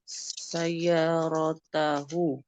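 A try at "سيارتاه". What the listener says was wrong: Sayyaratahu. Ahsan. Sahih. Masya Allah.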